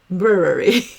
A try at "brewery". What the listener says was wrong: I would just say brewery. Yeah, if you can say brewery, I would just try to eliminate that second, that last E sound. Brewery.